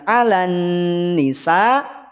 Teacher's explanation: ketika mengucapkan alanisa tahan pada bunyi Nun dengungkan dua harakat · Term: gunah, Gunnah